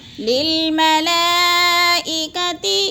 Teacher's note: چار الفی مد ہے، چار حرکات کے برابر ہم نے اس کو لمبا کر کے پڑھنا ہے